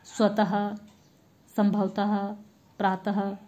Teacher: विसर्ग संस्कृत में जिसका प्रयोग होता है, इसका उच्चारण ह की तरह किया जाता है